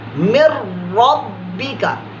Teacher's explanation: यहाँ पर जो है इदगाम हो रहा है तो हमने नून की आवाज नहीं निकाली। मिर रब्बी का, मीम को डायरेक्ट समझे रा से मिला दिया, मिर रब्बी का।